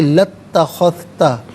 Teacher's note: لام پر زبر ہے، اسے اتخذتا کی تا کے ساتھ ملائیں گے، درمیان میں سے الف یعنی حمزہ کو حذف کیا جائے گا